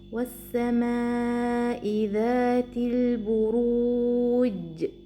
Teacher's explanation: Qalqalah completes the sound of Jeem by releasing the trapped sound and giving the letter its clear and strong pronunciation.